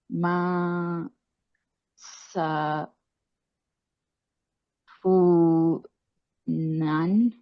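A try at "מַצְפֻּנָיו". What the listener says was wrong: Vav at the end. Matsunav. Punav.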